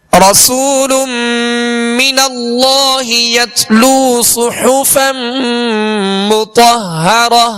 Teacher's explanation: صاد کو پر پڑھیں گے، سیٹی کی آواز پیدا ہوگی، ہا کو وسط حلق سے ادا کریں گے